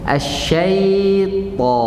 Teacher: Huruf ta tebal. Waktu kita masuk huruf ta, pangkal lidah naik.